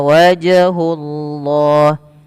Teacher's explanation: pada lafal jim ada bacaan qalqalah ya dan dia harus dipantulkan Allahnya didahului dengan damah maka dia apa namanya tebal lafzul jalannya.